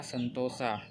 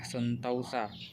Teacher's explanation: Misalnya pada kata sentosa diucapkan sentausa. Perubahan ini terjadi pada bunyi vokal tunggal o ke vokal rangkap au, tetapi tetap dalam pengucapan satu bunyi puncak. · Diftongisasi adalah perubahan bunyi vokal tunggal atau monoftong menjadi dua bunyi vokal atau vokal rangkap atau diftong secara berurutan. Perubahan dari vokal tunggal ke vokal rangkap ini masih diucapkan dalam satu puncak kenyaringan sehingga tetap dalam satu silaba.